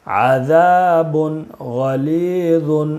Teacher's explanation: تنوین کے بعد حروف حلقی کے 6 حرفوں میں سے غین ہے، اس لیے تنوین کو بغیر غنہ کے جلدی پڑھیں گے۔